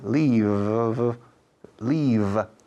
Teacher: La V en inglés es una F vibrada. Es una F española con las cuerdas vocales en acción.